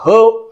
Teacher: म्हणून कंठद्वारीय स्पर्श स्वन जे असतील, जे कंठद्वारी, कंठातून निघणारे स्वर आहेत, उदाहरणार्थ ह आपण कंठद्वारी म्हणतो. ह चा उच्चार या ठिकाणी आपल्या कंठामध्ये होतो, कारण स्वरतंत्री पूर्णतः प्रसारण पावलेल्या असतात आणि हवा जायला जागा नसते.